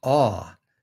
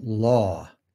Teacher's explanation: The mid back lax rounded vowel is ah, as in law.